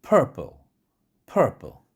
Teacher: 같은 P가 두 개가 있는 단어지만 앞에 P가 강한 기음이 쏟아지는 strongly aspirated P 사운드고요. 뒤에 있는 P, 이것은 weakly aspirated P 사운드입니다.